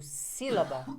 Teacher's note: ó proparoxítonas todas são acentuadas então se eu falo sílaba e a sílaba tônica não é a última né a penúltima e sim a antepenúltima sílaba